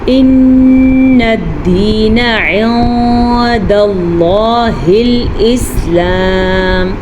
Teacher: نون ساکن یا تنوین کو ہم چھپا کے پڑھیں گے لیکن غنے کے ساتھ پڑھیں گے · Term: اخوا کا قاعدہ